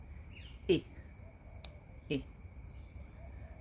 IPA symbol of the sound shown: ɪ